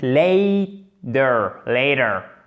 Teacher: vous avez l'accent tonique en premier. Le A ici, cette voyelle, c'est une diphtongue.